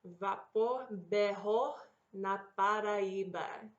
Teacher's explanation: saying your double R's like a guttural H